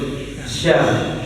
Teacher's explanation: Penyebutan sya ini angin tuh menyebar ke mulut. Sya. Sebarkan semua angin ke mulut tuh.